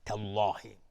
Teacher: بله، آیه 63 از سوره نحل. تالله لفظ جلاله اینجا تفخیم هست، مفخم هست چون قبلش فتحه اومده